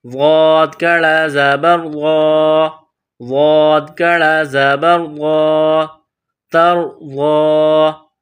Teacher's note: ایک الف کے برابر کھینچ کر پڑھیں گے